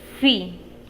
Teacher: los labios se juntan en el caso de la vía dental el labio inferior y los dientes superiores se tocan